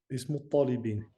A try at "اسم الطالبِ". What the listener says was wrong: Attention, des fois j'entends in à la fin. Ismu talibi.